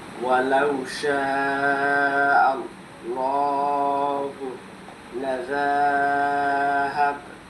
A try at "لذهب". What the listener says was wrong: এই যে দেখো লাজা টান দিলা, এখানে কি কোনো মদের চিহ্ন আছে নাকি হরকত আছে? জালের উপরে জবর আছে না,